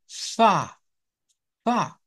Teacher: es un sonido labio dental es un sonido fricativo sin voz